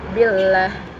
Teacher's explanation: karena sebelum lam jalalah dapat huruf berharkat kasrah, maka cara membacanya itu dibaca tipis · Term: tarkik lam